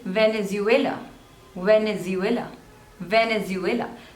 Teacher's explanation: there are total three syllables and the stress is on the third